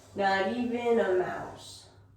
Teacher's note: we're going to stress even and mouse.